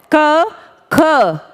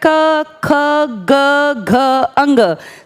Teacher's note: दांतों पर प्रेशर नहीं है। क बोल के अगर आप देखेंगे तो पता चलेगा आपका सारा प्रेशर गले पर है। कंठे पर है। क ख महसूस कीजिए बोलते हुए।